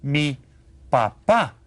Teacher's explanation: And notice this accent here. You stress the second syllable when you say papá.